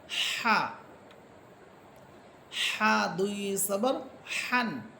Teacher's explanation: আমি যদি গলাটাকে একটু চাপিয়ে বলি তাহলেই হা হরফটা খুব সুন্দরভাবে উচ্চারিত হবে